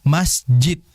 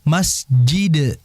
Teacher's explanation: Dal itu punya sifat qalqalah sehingga harus dibaca masjid.